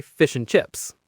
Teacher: If you say it slowly, you hear the D in ant, but usually we say fish and chips. That D sound is completely gone. It just vanishes into thin air. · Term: elision